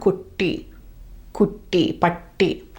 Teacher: When it's double, it holds on to that strong T sound